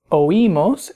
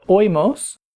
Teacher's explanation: the I has an accent mark to break the diphthong, meaning that it makes that I a syllable by itself, so it's oímos instead of oímos, and oís instead of oís.